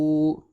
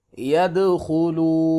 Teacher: واو مدہ ہے، اس سے پہلے پیش ہے لہذا یہاں پہ مدہ کریں گے، 1 الف برابر لمبا کریں گے۔